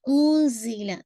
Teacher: زی کی آواز آپ نے واضح کرنی ہے، زال نہیں ہے یہ